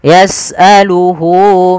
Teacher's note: panjangnya berapa harakat untuk Mad Silah qasirah yaitu dua harakat